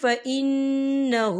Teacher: نون مشدد ہے، یہاں پر غنہ بھی ہوگا اور ہا کے اوپر الٹا پیش ہے اور اس پر چھوٹی سی مد بھی ہے، تو ہم اسے 4 حرکت کے برابر کھینچ کے پڑھیں گے۔